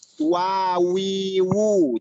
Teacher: Jadi waw itu jahar sifatnya. Dia juga mempunyai sifat rokhawah. Rokhawah itu mengalirnya suara.